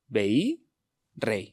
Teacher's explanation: decimos que la i es una semivocal porque no es una vocal central de la sílaba y suena más breve